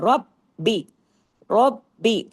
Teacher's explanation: र को हैवी और बा को डबल लेकिन बारीकी से · جوڑنا ہے، را کو ہیوی کرنا ہے، رب بی، رب بی، را کو ہیوی اور با کو ڈبل لیکن باریکی سے